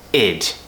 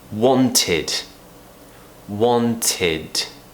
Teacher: finish with a D, where we push the tongue to the top of the mouth and we voice the sound. It's not unvoiced.